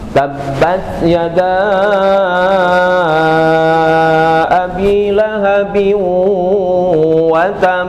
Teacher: karena huruf qalqalahnya dalam hal ini ba ya di ayat pertama ada tasdid maka dia harus ditahan terlebih dahulu sekira dua harakat kemudian baru qqalah tabbat yada abi lahabin watab nah gitu ya ulangi lag 1 2 3bas ya ma agnahu maaluhu wama kasab mahu wama kasab sayasla Lahab wamroatuhu hammalatal hathbraatuhu hammal fi jidiha hablum Masad ya.